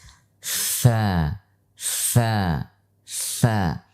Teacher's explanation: Kemudian secara posisi lidah, huruf fa dibaca dengan lidah datar, sehingga ia termasuk huruf yang istifal atau tipis. Kemudian secara tekanan dia termasuk huruf yang ringan, sehingga namanya adalah huruf rokhawah. · Huruf fa memiliki sifat hamas, sehingga akan kita lihat ketika mengucapkan fa, fa, fa, ada hentakan nafas di sana. Kemudian secara posisi lidah, huruf fa dibaca dengan lidah datar, sehingga ia termasuk huruf yang istifal atau tipis.